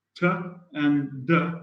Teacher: That's why, I mean, in sounds like t and d, we say that these are alveolar sounds. T is voiceless, d is voiced.